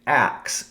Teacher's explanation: And they literally hear and say axe instead of ask. So they take the K and the S and they reverse them